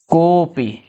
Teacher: अब वैसे तो सामान्य रूप से हम ओ पढ़ते हैं। लेकिन जब अवग्रह चिन्ह लगा देंगे तो ओ को हम थोड़ा खींच कर बोलेंगे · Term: प्लुत